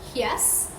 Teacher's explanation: the tongue approaches the hard palate, creating only a slight constriction which produces a smooth vowel-like sound. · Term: glides